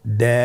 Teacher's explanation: দাল হরফটি বারিক হরফ। এ হরফটি উচ্চারণ করার সময় আমরা অবশ্যই তিন আলিফ টেনে পড়বো।